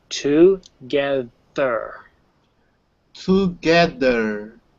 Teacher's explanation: i'm hearing a bit of a d there